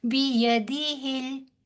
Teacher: یہاں پہ کوئی بھی حرف جو ہے وہ کھینچ کر یا لمبا کر کر نہیں ادا ہوگا. بیدہل ہا کو لام کے ساتھ جا کے ملائیں گے کیونکہ لام ساکن ہے